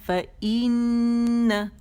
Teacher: یعنی یہ آواز کمپلیٹ ہوگی فا کی، اس کے بعد حمزہ کی آواز نکالی جائے گی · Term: حمزہ قطع